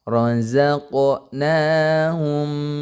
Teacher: izhar syafawi tidak boleh diengungkan ya rozaqnaahum Nah kalau seperti itu salah harus dilangsungkan aja rozaqnaahum